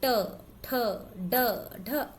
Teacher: आपकी जो जीभ है वो पहले आगे की तरफ से मुड़ जा रही है, फिर एक छूट मतलब तेजी से छूटती हुई ये सारी आवाजें निकाल रही है।